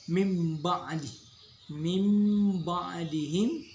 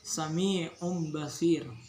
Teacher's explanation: Cara membacanya adalah bunyi nun mati atau tanwin berubah menjadi bunyi mim. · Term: iqlab